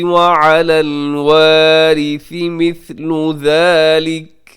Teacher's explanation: وارثی میں را باریک ہوگا